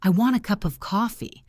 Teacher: The words a and of are not pronounced clearly.